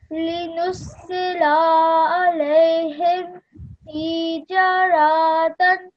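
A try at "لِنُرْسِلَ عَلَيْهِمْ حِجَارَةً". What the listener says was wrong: So again, that one messed up a little bit. So first of all, this lam, remember, it's just 1 second. It's becoming too long.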